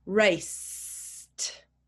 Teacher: There's no vibration at the end of the word.